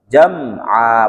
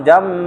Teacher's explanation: Dan jangan didengungkan. Ini memang mim sukun tetapi tidak dengung. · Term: izhar syafawi